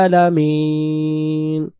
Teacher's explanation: আইন অক্ষরের উচ্চারণের স্থান হলো গলা চেপে একটু পড়তে হবে